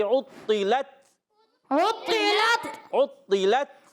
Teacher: عین کو باریک رکھنا ہے اور طا کو موٹا رکھنا ہے، طا موٹے حروف میں سے، عطلت کیا کریں گے؟ · لام کو تا سے ملانا ہے اور تا شدیدہ میموسہ حرف ہے، آواز آئے گی عطلت عطلت عطلت۔